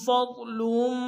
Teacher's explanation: فا کو ضاد کے سامنے لائیں گے، ضاد کو موٹا ادا کریں گے۔